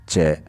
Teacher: जैसे ही हम उच्चारण करते हैं च, तो हमारी जो जिह्वा है वो तालु को छूती हुई आती है। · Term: तालव्य